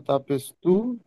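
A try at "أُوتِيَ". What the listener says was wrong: হামজা তাপেস তু নয়, হামজা তাপেস উত। তো নাই, তা, হামজা তাপেস উত, তাজের তি, উত্তি। তাস তাসদিদ এসেছে বলেন। দেখেন, বলেন, বা এর উপরে তাসদিদ এসেছে।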